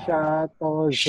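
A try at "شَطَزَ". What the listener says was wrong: Ini agak-agak jangan berbau o ya, berbau a. Shalpozo bunyi o semua nih. Shalpozo. Shalpozo ya.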